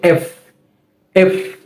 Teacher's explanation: এফ, অর্থাৎ এই বর্ণটা আমরা যখন উচ্চারণ করব, আমাদের ওপরের দাঁতের আগা নিচের ঠোঁটের সাথে একটু লেগে উচ্চারিত হবে এফ। এফ, যখন আমরা এটা উচ্চারণ করতে যাব, আমাদের ওপরের দাঁতের আগা এবং নিচের ঠোঁটের পেটের মধ্যবর্তী জায়গা থেকে একটা বাতাসের মতো বের হবে এফ।